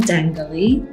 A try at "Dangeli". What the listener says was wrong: No G.